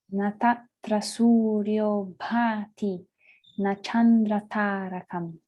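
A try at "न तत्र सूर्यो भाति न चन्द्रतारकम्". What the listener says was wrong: Yes. Well done.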